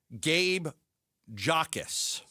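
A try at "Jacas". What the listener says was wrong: The J is silent.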